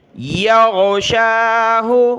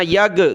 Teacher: یا غین نکالیں، اس کی جگہ آپ نے گاف نہیں پڑھنا، یگ گاف نہیں پڑھنا.